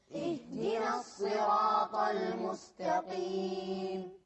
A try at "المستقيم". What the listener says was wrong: مستقيم غلط، القاف هذه أقل تفخيما. مستقيم.